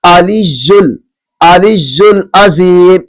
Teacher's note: عین کو حمزہ سے تبدیل کر دیا گیا